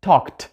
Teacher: at the end of it we have letter k which is voiceless consonant in this word we do not use our voice to pronounce it so the ending ed is going to be voiceless